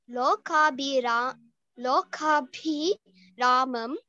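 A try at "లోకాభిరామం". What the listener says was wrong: Good, very good effort there.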